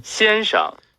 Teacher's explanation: So we're going to type Xian, that's a first tone, and then Sheng. And this Sheng is usually a first tone, but in this word it's a neutral tone